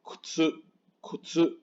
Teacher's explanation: Sí decimos la U si se fijan, pero es como un suspiro, es muy bajita.